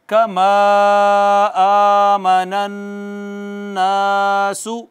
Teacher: नून मुशद्दद पर गुन्ना हुआ है, ये आखिरी हमारा आज का मखरज था खैशूम से।